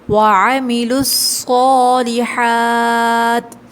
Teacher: عین کو حلق کے درمیانی حصے سے ادا کریں گے